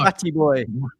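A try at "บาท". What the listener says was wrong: It's not Bat, it's Bart. I know what it is. It's Bart.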